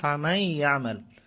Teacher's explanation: আ'মালাহুম, তারপর হচ্ছে ফামান ইয়া'মাল, এখানেও আছে ফামান ইয়া'মাল, ফা এর পরে মিন, এর পরে নুন, নুনের মধ্যে সাকিন আছে, যে সেহেতু নুন সাকিন এবং তানবিনের পরে, এখানে নুন সাকিনের পরে ইয়া আসছে গামের হরফ, তাহলে মিলে যাবে, মাই, ইয়ার সাথে মিলে যাবে